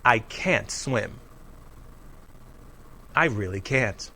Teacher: can't always has a strong clear vowel sound the vowel sound does not change when we use can't in